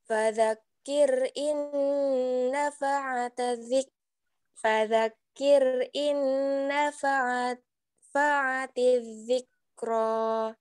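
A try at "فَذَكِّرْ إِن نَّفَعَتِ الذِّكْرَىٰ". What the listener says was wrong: Nah, ada suara seperti nafas tertahan tapi dipantulkan. Fadzakir, coba kafnya lebih ditekan. Fadzak, ada tanda sidah. Fadzak, dzikir inna fa'atiz dzikra.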